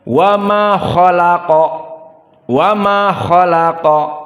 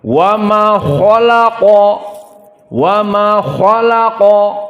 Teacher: Maka kha dan lam dan qaf di sini terdapat at-tafkhim pada kha dan qa